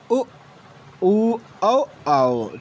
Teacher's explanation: जिन स्वरों के उच्चारण में जीभ का पाश्च्य भाग यानी पिछला भाग कार्य करता है उन्हें हम पाश्च स्वर कहते हैं। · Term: पार्श्व स्वर